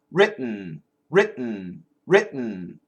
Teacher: It's not really the standard glottal stop. It's more of a stop in the front.